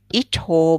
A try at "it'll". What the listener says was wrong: Be a little careful with the vowel sound there. It'll. It's a bit quicker. It'll.